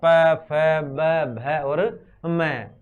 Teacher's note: इनको अपन बोलते समय दोनों होठ आपस में क्या करते हैं, मिलते हैं, तो इनका उच्चारण स्थान क्या हो गया, अपने ओष्ठ हो गए। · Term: ओष्ठीय वर्ण